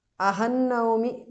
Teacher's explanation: Pratidinam aham naumi. Ahan naumi because of Sandhi. Anuswara changes to Nu there.